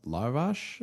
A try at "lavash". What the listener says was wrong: Lavash. You said I think you said larvish, which you know the larvish chips.